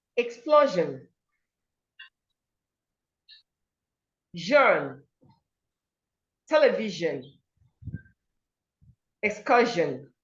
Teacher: The sound, the letter S makes in these words is j, not sh.